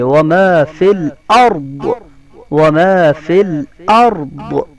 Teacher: تو یہاں پر را کو اور ضاد کو دونوں کا موٹا پڑھیں گے